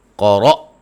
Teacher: قاف کو موٹا، را کو موٹا، حمزہ کو جھٹکے سے ادا کریں گے